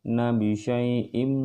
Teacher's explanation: Nabi syai'im, nun mati atau tanwin, ini tanwin menghadapi huruf mim, maka dia harus ada penahanan di sini. Nun mati atau tanwin menghadapi mim, di sini menghadapi mim, dia disebut dengan hukum idgham bi gunnah ya.